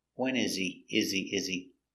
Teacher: he is not important so the H is silent it's not stressed